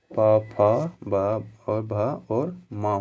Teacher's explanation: इसको बोला जाता है ओष्ठी वर्ण बोला जाता है, क्योंकि इन सभी का उच्चारण ओष्ठ से किया जाता है, इसीलिए इन सभी को ओष्ठी वर्ण भी बोला जाता है।